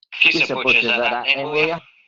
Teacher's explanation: después de las palabras en donde teóricamente se tendría que pronunciar con la alveolar oclusiva, cambia al sonido glotal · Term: glotalizaciones